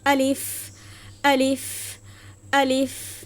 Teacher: শেষে উচ্চারণে ফা আসে এবং ফায় হচ্ছে বাতাস জারি থাকে